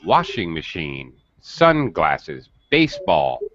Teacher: The first word in the compound noun is going to have primary stress.